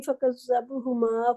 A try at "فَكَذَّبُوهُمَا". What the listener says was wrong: فَكَذَّبُوهُمَا، بوہما نہیں ہوگا. فَكَذَّبُوهُمَا،